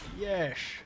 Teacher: his every S was like a sh sound